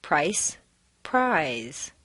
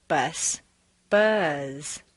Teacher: notice how the voiced word is drawn out